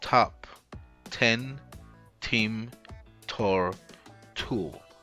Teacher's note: The first one is a voiceless alveolar stop aspirated. It is represented by a T letter with a little H on top of it.